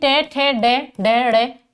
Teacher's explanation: ट ठ ड ड ड़ इनका जो उच्चारण स्थान है वो है मूर्धा